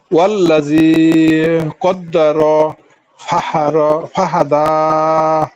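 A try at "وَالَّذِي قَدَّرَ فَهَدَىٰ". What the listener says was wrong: হ্যাঁ, এই যে কদ্দার একটু টান হয়ে যাচ্ছে। কদ্দারা বলে আওয়াজটা ছেড়ে দেন প্রয়োজনে।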